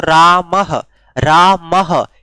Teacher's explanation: यानी विसर्ग का उच्चारण आपने किया ह की तरह